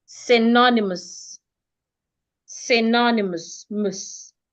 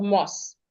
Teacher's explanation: The OU makes the schwa sound.